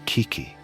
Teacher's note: The ki sound is a hard, abrupt consonant, a quick stop and start of air. The I vowel is a high, thin frequency.